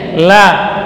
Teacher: makhrajnya dari salah satu ujung tepi lidah